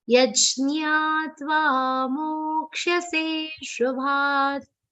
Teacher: Mo will be a long sound, se will be a super long sound, and the last ta will be pronounced half.